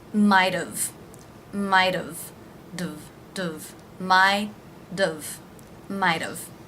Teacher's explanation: the t here is going to be pronounced as a flap t so it will actually sound like a d